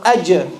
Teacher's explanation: The middle of the tongue should be touching the palate. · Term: jim